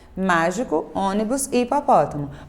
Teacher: elas são palavras que a sílaba tônica é a antepenúltima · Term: proparoxítonas